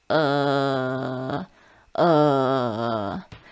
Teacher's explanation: Feel that creaky sound in your throat. Now that's your third tone.